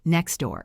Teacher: next door often sounds like next door. The T disappears. Try it, next door, see you.